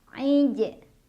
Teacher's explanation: Ij, ada qalqalah sugro karena ada huruf qalqalah yang sukunnya sukun asli. Dibacanya dipantulkan dan pantulannya kecil.